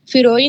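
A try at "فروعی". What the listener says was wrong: فروئی نہیں، فروئی فے پر زیر نہیں، فے پر زبر،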